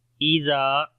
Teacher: زال کو نرم پڑھیں گے اور لمبا بھی کریں گے، الف مدہ ہے